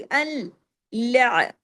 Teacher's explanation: और डबल आएगी ना आवाज, पहले अल और फिर ला, दोनों लाम पढ़ने में आएंगे। लाम पहले अलिफ लाम जबर अल, और फिर लाम आइन जबर ला, लेकिन जमाओं के साथ, हिलाना नहीं है, बारीक हरूफ है, हैवी नहीं करने।